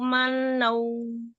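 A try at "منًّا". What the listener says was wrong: Mana nun tasdid ya? Kenapa gunanya nggak dipanjangin? Manau nun tasdid kan tingkatan guna akmal panjangkan.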